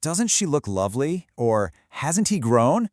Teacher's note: A negative question, when you say it with a falling tone, isn't really a question anymore. It actually becomes an exclamation.